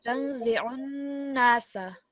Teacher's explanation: Again, so just on these noon, where you see the noon mushaddad, again, just try to make that slight nasal sound